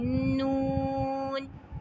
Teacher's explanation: مسوڑوں کے ساتھ جب وہ ٹکرائے گی تو ناک کی طرف سے جو ہے وہ ہماری آواز نکلے گی، نون، ٹھیک ہے، یہ آواز نکلے گی. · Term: غنہ